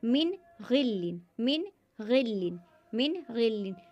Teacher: नून को ज़ाहिर करके पढ़ेंगे, नून में गुन्ना नहीं करेंगे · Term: इजहार